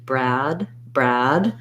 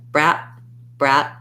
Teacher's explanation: if i hold the vowel shorter they'll hear it as a t sound